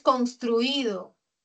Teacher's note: Tengo la sílaba tónica en truí.